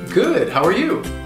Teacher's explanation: If two people say it to each other, the second person is not going to reduce the word you with the schwa sound, ya. Instead, they will actually say you.